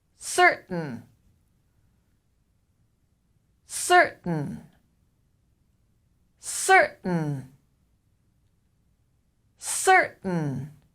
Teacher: in american english the t is a glottal stop